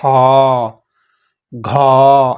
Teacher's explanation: खा के उच्चारण में खा, घा ऐसे बोलना पड़ रहा है, ज्यादा ताकत लग रही है, ज्यादा हवा छोड़नी पड़ रही है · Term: महाप्राण